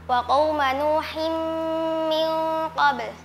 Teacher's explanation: Nun sukun bertemu dengan qof. Hukumnya ikhfa hakiki dibaca samar.